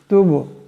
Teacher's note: এখানে বা সাকিন, বা কলকলা হরফ, আওয়াজটিতে টক্কর খাবে।